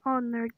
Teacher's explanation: in the word honor the h is silent so o is a vowel and it is the first sound heard